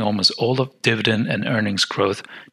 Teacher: So when we said this will serve for attaining almost all of dividend and earnings growth, what happens to the D and earnings growth? The D is cut off. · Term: elision